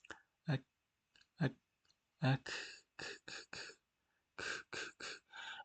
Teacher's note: Comparing them both, look, Qaaf is behind on the soft palate, Kaaf is in front on the hard palate. And Kaaf is not heavy, so it has a straight, its tongue goes straight down.